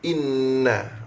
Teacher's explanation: Inna nun syaddah dengung mesti kena cukup.